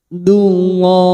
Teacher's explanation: Lam jalalah yang didahului duma tanwin kita baca tafkim